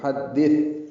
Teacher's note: فحدث یہ غلط ہے، فحدث تا ہے، نرمی سے پڑھیں گے، زبان کی نوک سامنے کے دانتوں کے اندرونی کناروں سے لگائیں گے اور اس میں ہمس ہوگا، ہلکی سی سانس کی آواز جاری رہے گی